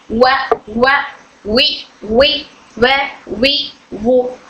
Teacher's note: वाव हमारे दोनों होठों की गोलाई से अदा होता है। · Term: वाव का मखरज